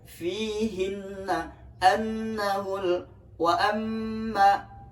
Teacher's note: Nunnya bertasdid. Jadi dibaca dengung, cukup 2 ketuk saja.